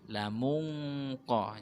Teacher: Jadi pada pelafatannya nun, nah, kita sudah memasukkan makhrajnya qaf. Lamung qah, bentuknya seperti qaf, mungqa. · karena qaf di sini masuk pada hukum bacaan ikhfa, kita baca samar